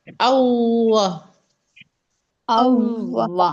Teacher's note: होंठों को अच्छा सा गोल करेंगे क्योंकि तशदीद है। वाव पे हम थोड़ा सा रुकेंगे क्योंकि तशदीद है ना।